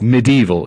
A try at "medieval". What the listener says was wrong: You always throw like an A in there, like right in the middle.